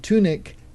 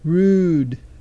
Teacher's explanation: duration is the difference between the short and the long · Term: Upsilon